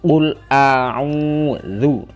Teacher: mad tabi'i dhammah bertemu wawu, dibaca dua ketukan.